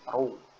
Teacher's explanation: itu dia dibaca tebal tafkhim ya Jadi bukan dibaca ru tapi ro